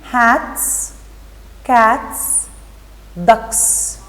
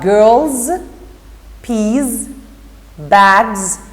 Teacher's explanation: Hats, cats, ducks. I pronounce it as a S. But girls, peas, bags, I pronounce it as Z.